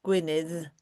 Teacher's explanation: In Welsh we have a double D, which you say by putting your tongue behind your top teeth